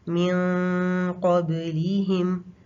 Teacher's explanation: تا میں ہم نے تھوڑا سا گیپ چھوڑا تھا، لیکن قاف اور کاف یہ 2 ایسے لیٹرز ہیں کیونکہ ان کا مخرج نون سے کافی دور ہے، تو اس میں مخرج کو ہم بند کر دیتے ہیں، یعنی مخرج پہ لگا کے اخفا کیا جاتا ہے قاف اور کاف میں